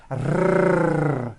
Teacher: the R is produced by bringing the tongue forward in the front of the mouth, behind the upper teeth, and rolling or trilling the tongue.